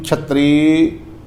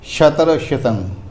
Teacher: ਛਤਰੀ ਥੋੜਾ ਕਸ ਕੇ ਕਹਿਣਾ ਛਤਰ ਛਿਤੰ ਇਹ ਪੋਲੇ ਪੋਲੇ ਕਰਨੇ